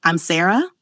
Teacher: One of the quickest ways to sound unsure, even when you aren't, is by letting your voice rise at the end of a sentence. It's that upward inflection that turns a statement into something that sounds like a question. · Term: rising intonation